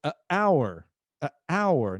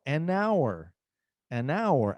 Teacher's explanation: hour começa com H mas não pronunciamos o h então nós falamos an hour e a o a no caso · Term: o h é mudo